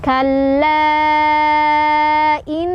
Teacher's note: Cara bacanya didengungkan. Dengungannya ditahan sampai kerasa ke hidung. Ditahan boleh 2 sampai 4 ketukan. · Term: Gunnah musyaddadah